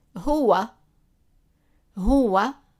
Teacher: When it's a W, it's a consonant, and when it's U, it's a vowel. The sound of it in MSA is either W, like w sound, or U, as in a long vowel. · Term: waaw